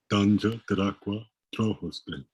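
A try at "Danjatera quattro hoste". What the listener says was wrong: Excellent.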